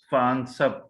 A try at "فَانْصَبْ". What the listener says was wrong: فانصب نہیں ، فنصب. بالکل یہ حمزۃ الوصل ہے نا, پیچھے سے ملائیں گے تو نہیں پڑھا جائے گا.